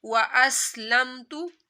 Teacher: सिन के ऊपर सीटी निकालनी है हमने, सिन की आवाज़ सीटी की तरह आनी चाहिए